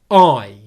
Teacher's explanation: The first part of this diphthong makes up 3/4 of the length. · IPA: /aɪ/